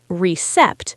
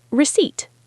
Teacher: It has a letter P in it, but we do not pronounce the P.